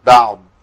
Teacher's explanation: لكن الضاد صوتها بيجري داخل الفم